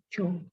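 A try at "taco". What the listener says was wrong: Tacho, not tako. Tacho.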